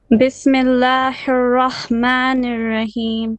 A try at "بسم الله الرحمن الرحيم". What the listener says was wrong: Rahim. Middle throat. Don't say Bismillah. No. Bismillah. The lam of the word Allah needs to be flat here.